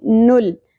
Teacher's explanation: لام ساکن پہ اکثر لوگ قلقلہ کرتے ہیں قلقلہ نہیں ہونا چاہیے نل نہیں پڑھنا.